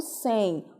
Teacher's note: O sem, ortograficamente, não tem encontros vocálicos, mas foneticamente, esse M não tem som de M e sim som de I. Então, nós temos aí encontros vocálicos.